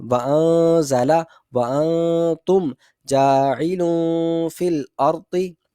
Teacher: نون کو اس کے مخرج کے اندر چھپا کر پڑھیں گے، ظاہراً نہیں پڑھیں گے، ظاہر نہیں کریں گے. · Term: اخفا